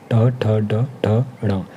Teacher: ट वर्ग का ट, ठ, ड, ठ, ण, इसका उच्चारण स्थान मूर्धन्य होता है।